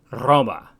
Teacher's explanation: the letter R is trilled or rolled in Latin as it is in latin's modern descendants such as Italian and